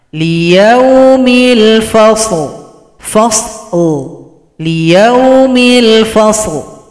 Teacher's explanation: Kalau berhenti lam disukunkan, berikan bunyi vokal.